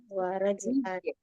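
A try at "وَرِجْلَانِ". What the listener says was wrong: Nah, kasroh roknya rijalani.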